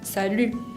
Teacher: si tengo la palabra salut sola, se acentúa en la U, salut. Ahora, si tengo esa oración, salut les filles, pongo más acento sobre la I de fille, y la palabra salut no tiene mucha acentuación, ¿no? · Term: acento tónico